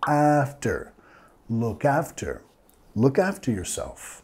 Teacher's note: Vamos a enfatizar la primera sílaba.